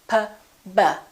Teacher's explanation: For example, P and B, P and B have the same point of articulation because both of them require the lips to close